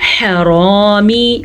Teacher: ح کو واضح کریں، را کو پر کریں